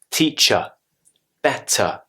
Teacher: the schwa sound is on the r sound at the end of the word